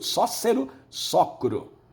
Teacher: Nós temos aí a queda do E, era sócero, o E caiu, ficou só cru, sócero, socro. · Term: síncope